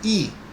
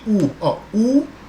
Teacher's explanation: I, é diferente de U, U, veja que a língua desce, U, agora I, veja que a língua sobe